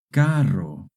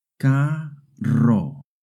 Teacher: two Rs together make a rolling R sound